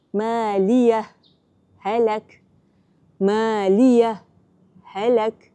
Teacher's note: Kita berhenti seketika namun tidak menarik nafas. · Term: saktah